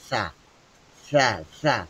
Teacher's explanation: জিহ্বার আগা উপরের দাঁতের আগাতে স্পর্শ হবে।